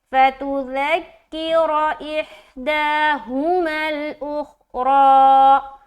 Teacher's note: را کو موٹا بھی رکھنا ہے کیونکہ کھڑا زبر کی صورت میں موٹا پڑھا جائے گا